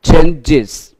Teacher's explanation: Và ES S này được phát âm là is.